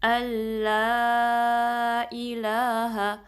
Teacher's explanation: لا کو 2 count stretch کرنا ہے، جو لا سے پہلے حمزہ کے نیچے کسرہ ہے اس کو آپ نے شارپ رکھنا ہے، اے نہیں پڑھنا بلکہ ای. الہ شارپ بھی رکھنا ہے، ہا کو اسٹریچ نہیں کرنا.